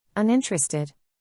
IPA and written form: ˌʌnˈɪn.təˌrest.ɪd (Uninterested)